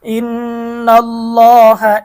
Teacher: আল্লাহ শব্দের ডানে জবর থাকার কারণে আল্লাহ শব্দের লামটা মোটা হবে